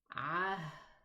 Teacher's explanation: The exit of the H is in the deepest part of the throat.